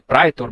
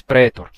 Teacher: não mais o ditongo ai mas sim um simples e